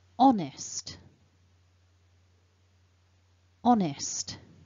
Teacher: So the two marks that are here highlighted in blue, the dot shows us the word is split into two syllables, and the mark top left shows us that the first syllable is the strongest syllable. So when we pronounce the word honest, the on is stronger. So looking at the actual sounds then, the first syllable begins with that vowel, o, and then we've got the nasal n, so on, on.